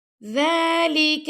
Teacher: ذال کو نرمی سے پڑھیں گے، کاف کو بھی ہم نے باریک پڑھنا ہے